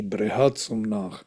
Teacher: The stress is on the second syllable, which tells us that this is Bahuvrihi compound.